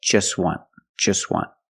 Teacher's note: the t is between consonants so it's silent